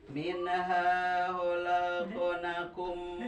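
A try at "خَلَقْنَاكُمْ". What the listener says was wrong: Nah panjangkeun khalaqnakum.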